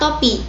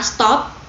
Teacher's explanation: Nah, bunyi T jadi dipengaruhi oleh S yang merupakan bunyi lamino alveolar. Jadi, T yang merupakan bunyi letup apikodental berubah menjadi letup lamino alveolar disebabkan oleh pengaruh secara progresif